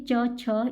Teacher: जब हम बोलेंगे तो हमारे जीव तालू का स्पर्श करती है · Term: तालव्य